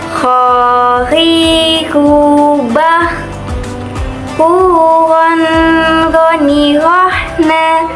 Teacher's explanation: kita harus mengeluarkan suaranya dari tenggorokan yang terdekat dari rongga mulut ciri khasnya terdengar seperti suara orang yang mendengkur Khoiri khubah puwon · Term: huruf foini